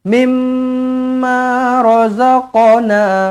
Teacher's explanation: nun kosong bertemu dengan mim sabdu. Jumpa dengan mim sabdu, terus rapatkan terus bibir. Rapatkan bibir di sini adalah idgham ma'al gunnah.